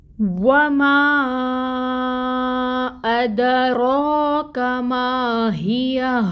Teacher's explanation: اور یہ ہا 2 چشمی ہا ہے، اقصی الحلق سے ادا ہوگی